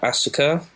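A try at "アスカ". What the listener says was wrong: the SU's not pronounced because Japan.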